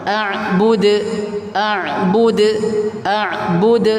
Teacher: huruf dal ketika di belakang sendiri qalqalah jangan sampai dibaca tertahan.